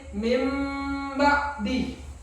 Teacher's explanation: Ya, kalau nun sukun dan tanwin itu bertemu dengan huruf ba, maka hukum bacaannya adalah iklab. Kemudian cara membacanya adalah dengan cara membalik suara huruf nun sukun dan tanwin itu menjadi huruf mim